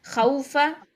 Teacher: ज्यादा नहीं लंबा करना है हमने, 1.5 काउंट्स होती है इसकी, ठीक है, इससे ज्यादा लंबी नहीं होती। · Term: वाउलीन